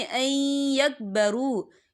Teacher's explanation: واو ساکن ہے، واو ساکن سے پہلے پیش ہے، تو ہم اسے 2 یا 3 حرکت کے برابر کھینچیں گے۔ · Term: واو مدہ